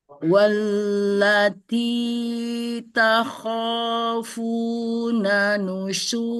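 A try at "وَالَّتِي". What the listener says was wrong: itu bagus tapi lupa ini ada bacaan panjang ini di lamnya di sini ya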